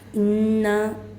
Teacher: انہیں مشددہ میں غنہ ہوگا، ایک الف کی مقدار کھینچ کر پڑھنا ہے